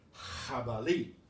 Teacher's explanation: pronounced like an H put in the back of your throat and start it there if you see this combination or this